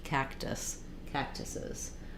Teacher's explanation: we don't let out the K but we do have a puff of air on the tea